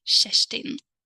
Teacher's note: we have a soft vowel E and then the K turns into Sh sound